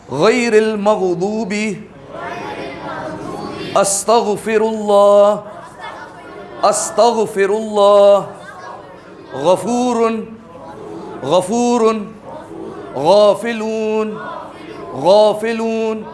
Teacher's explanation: یہ حلق کے پہلے حصے پہ زور پڑنا چاہیے تو آپ کو پتا چلے گا آپ کا صحیح ادا ہو رہا ہے. غافلون غافلون, جیسے غرارے کرتے نا وہ آواز آئے گی, ٹھیک ہے. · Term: غین